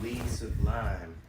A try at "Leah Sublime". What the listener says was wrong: L-E-A-H. Leah. Not Lee. Leah. That's so funny that he pronounces Leah as Lee.